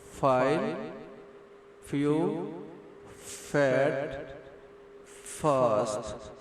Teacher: Fa is strong, voiceless, long consonant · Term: labiodental fricatives